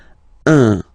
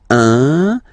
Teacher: So it's what we call the nasal, so it goes in your nose, okay? So if you listen to me, you don't hear any N, okay?